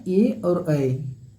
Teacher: कंठ प्लस तालू होता है आपका ए और ऐ